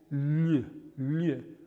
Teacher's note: Now this was the sound that is unfamiliar to English speakers, and it occurs when you have the G-L-I combination of letters, and we end up with a pre-palatal voiced lateral